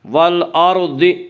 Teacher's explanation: اس کا قاعدہ یہ ہے کہ را ساکن سے پہلے زبر اور پیش ہو تو را ساکن کو پر پڑھا جائے گا، را ساکن سے پہلے زیر ہو تو را ساکن کو باریک پڑھا جائے گا۔ یہاں را ساکن سے پہلے حمزہ کے اوپر زبر ہے، اس لیے را ساکن کو پر پڑھیں گے۔